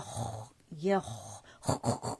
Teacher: اس کے اندر رخاوہ ہے، استعلا ہے